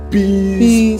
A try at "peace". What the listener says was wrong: Not please. It's peace.